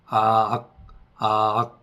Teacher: 아악 아악 하다 보면 자동적으로 성문이 닿는 느낌이 날 텐데요. 조금 더 익숙해지면 소리를 내지 않고 반복적으로 합니다.